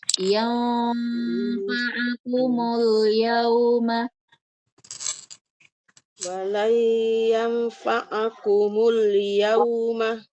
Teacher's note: hukumnya ikhfa. Jadi dia samar-samar berdengung.